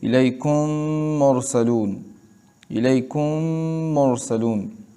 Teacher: اس کے بعد بھی میم ہے تو وہاں ادغام ہوگا، یعنی دونوں میمیں ایک ہو جائیں گی اور مثل ایک میم مشدد کے اس میں غنہ ہوگا